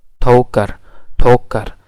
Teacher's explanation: here the th sound is aspirated. So in Urdu, different words are produced with aspirated and unaspirated th.